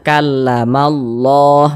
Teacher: huruf lam jalalahnya ini dibaca tebal dibaca tafkhim sehingga ini dibaca kamallah